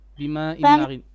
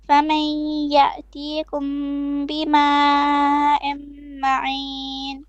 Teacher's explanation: 2 beats of إخفاء ميم شفوي